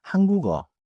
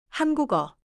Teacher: ‘한국’의 받침 기역 소리가 어로 이어져요.